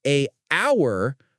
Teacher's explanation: Because the H in honor and hour is silent, the word starts with a vowel sound.